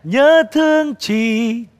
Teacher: thì có bắn hơi của chữ CH ra